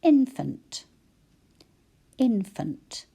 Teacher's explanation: when we say it we sort of hurry the last syllable